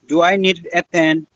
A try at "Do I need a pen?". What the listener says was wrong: আচ্ছা, এখানে need এবং a কে আমরা আলাদা করব না। need a, do I need a pen?